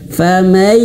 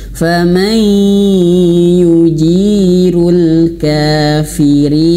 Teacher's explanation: Ditahan dan masuk hidung bukan hanya sekedar ditahan.